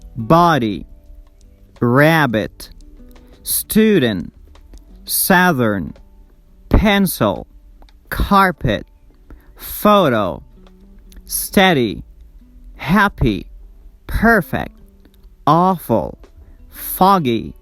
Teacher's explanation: We stress the first syllable in these words